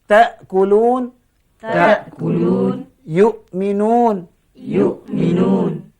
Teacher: Tekan suara di pangkal rongga tekak. Itulah cara membunyikan huruf hamzah.